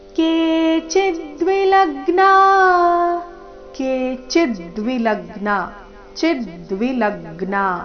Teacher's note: ಚಿ ಮತ್ತೆ ಲ ಮೇಲೆ ಈ ಶಬ್ದದಲ್ಲಿ ಆಘಾತ ಬರಬೇಕು